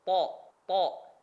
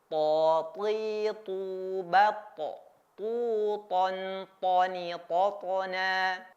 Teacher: tho itu ada di lidah atau lisan cara penyebutannya cukup mudah caranya adalah dengan merapatkan ujung lidah kita itu menempel ke gusi bagian atas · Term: huruf tho